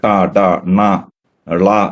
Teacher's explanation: ഈ ടീത്ത് റിഡ്ജിന്റെ മുകളിലേക്ക് നാക്ക് പോകുന്ന ശബ്ദങ്ങളാണ് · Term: retroflex